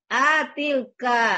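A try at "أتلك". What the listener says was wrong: A-nya pendek. Atilka. Atilka. Ulang.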